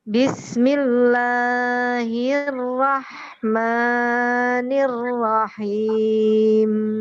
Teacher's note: Nah, ini mimnya ditahan dulu. Jangan him. Nah, gitu. Jadi ini ditahan dulu.